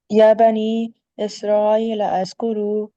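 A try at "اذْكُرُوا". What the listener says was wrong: لذکرو، لذکرو، زال کی بالکل آواز نرم ہونی چاہیے، لذکرو، یعنی زئی کی آواز نہیں آنی چاہیے، اذکرو، یعنی کچھ عرب تو اس کو دال، بلکہ قرآن میں بھی نا فہل من مدکر، وہ زال کی آواز کو دال میں چینج کر دیتے ہیں، مدکر،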